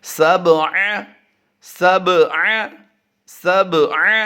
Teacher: درمیانی حرف پر ہم کیا کریں گے، قلقلہ کریں گے، با حروف قلقلہ سے ہے